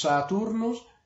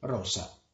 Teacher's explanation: la s siempre debe ser dura frizativa alveolar sorda no solo el comienzo de palabras sino también entre vocales y eso exactamente como el español por ejemplo tenemos saturnos y